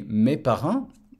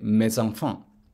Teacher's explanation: And if you were to say my children, for example, you would say mes enfants. Where the S is reintroduced as a Z because the next word begins with a vowel. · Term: liaison